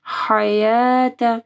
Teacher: حروف حلقی میں سے ہا، تو ہا کو واضح پڑھنا ہے گلے کے درمیانی حصے سے